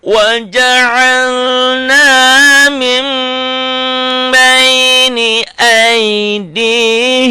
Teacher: n-nya jadi m. Mim itu iklab.